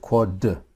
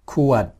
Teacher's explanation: you might be able to hear the sound stopping on the D but you won't actually hear the D being enunciated